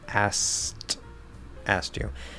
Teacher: You can even potentially drop the K completely.